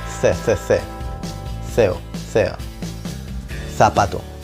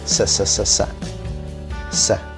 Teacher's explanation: Hay partes en España en las que decimos la C poniendo la lengua entre los dientes.